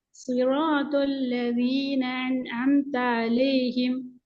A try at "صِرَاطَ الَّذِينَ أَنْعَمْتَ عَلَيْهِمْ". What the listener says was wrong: நீங்க முதலாவது வர ஏட சவுண்ட் தெளிவாக உச்சரிக்கிறது போதாது. நாங்க அலிஃபுக்கான சில முக்கியமான சில பண்புகளை சொன்னோம். அ என்றது மிக தெளிவாக வரணும் என்று சொன்னோம். உங்கள்ட்ட இயல்பா இருக்கிற டோன்ல தான் நீங்க ஓதுறீங்க.